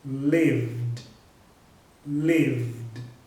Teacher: Então vai ficar assim, ó, lived, lived, ok? Não tem vogal nenhuma aí no meio do V e do D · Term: som de D